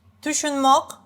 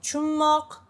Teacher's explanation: Tushunmok, which I read like chunmok, because in some regions, especially in the capital, it's shorter, chunmok, right? It's tushunmok, 3 syllables, but sounds like chunmok, 2 syllables.